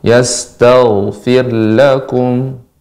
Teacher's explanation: huruf gain sifatnya mengalir ya, rakhawah dan juga tebal